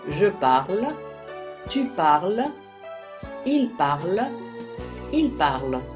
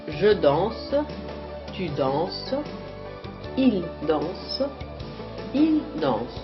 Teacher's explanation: les terminaisons E, ES, E, ENT ne se prononcent pas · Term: muettes